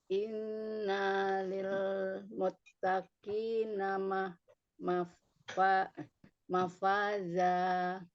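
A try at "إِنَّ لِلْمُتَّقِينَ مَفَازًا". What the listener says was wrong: Nanya jangan panjang Bun. Jangan inna, nggak boleh. Innalil muttaqina mafaza.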